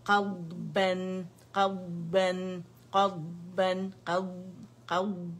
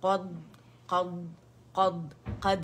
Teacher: قبن قبن, لیکن آواز رکے گی نہیں, شدت پیدا نہیں کریں گے, اور اس میں ہم نے قلقلہ بھی قد قد کر کے نہیں کرنا کیونکہ دود ہے, موٹا ہے, آواز جاری رہنی چاہیے